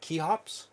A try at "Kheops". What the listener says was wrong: But there's no, like, you're adding a key. You're adding an EY between the K and the H.